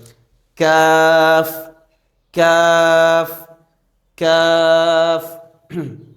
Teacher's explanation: আগে আগাইয়া একটু আগে বাড়াইয়া জিহ্বার গোড়া হতে একটু আগে বাড়াইয়া যে জিহ্বার গোড়াটি আছে এর থেকে একটু আগে সামনের দিকে আগাবে